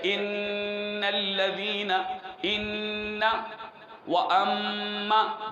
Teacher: جب شد آئے میم پہ اور نون پہ تو ان میں غنہ پیدا کیا جاتا ہے اور یہ ناک کے بانسے سے ادا ہوتا ہے